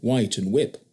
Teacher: they omitted the aspiration in words beginning with wh